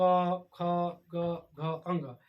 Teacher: क ख को हम लोग कहाँ से बोलते हैं, कंठ से बोलते हैं।